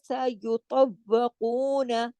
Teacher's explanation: سین اور یا کو موٹا نہیں کرنا، باریک لیٹر ہے